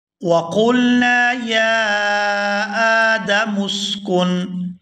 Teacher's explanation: یا کو بھی کھینچ کر ادا کریں گے اور آگے حمزہ کے اوپر کھڑی زبر ہے تو اس کو بھی کھینچ کر ادا کیا جائے گا